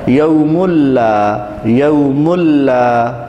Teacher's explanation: نون کی آواز مکمل طور پر ختم ہو گئی ہے اور ناک سے غنّے کی آواز نہیں آ رہی ہے، یہ ہے ادغام بلا غنّہ، یعنی بغیر غنّہ، بدون غنّہ۔